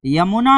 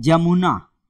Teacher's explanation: तो य का ज में उच्चारण दिखाई देता है